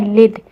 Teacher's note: دال کے اوپر سکون ہے تو دال کو ہم نے قلقلہ کے ساتھ ادا کرنا ہے